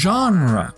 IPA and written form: ˈʒɑnrə (genre)